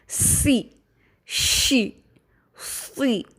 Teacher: سی میں صفت صفیر اور صفت ہمس نمایاں ہوگی